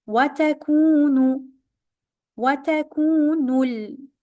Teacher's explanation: Ku is longer because of the wow here.